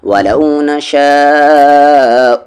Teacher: وَلَوْ نَشَاءُ، اب یہاں پر مد کے سمبل کے بعد حمزہ اسی ورڈ میں ہے تو اسے کھینچنا ضروری ہے.